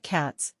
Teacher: in the word cats, the last letter is read as S, not Z, since it follows the voiceless sound, T. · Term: Progressive assimilation